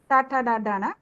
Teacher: మూర్ధన్యములు అంటే మూర్ధము దవడకు పై భాగము నుండి పలకబడేవి